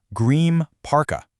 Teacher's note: the N in green actually physically turns into an M. So it becomes green parka.